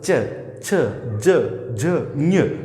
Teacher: च छ ज ज ञ तो ये जितने भी वर्ण अपन जब इनको उच्चारित करते हैं तो जीवा जो है वो कहीं ना कहीं तालू को स्पर्श करती है अथवा तालू और जीवा के बीच वायु जो है वो घर्षण · इनका उच्चारण स्थान जो है वो होता है तालु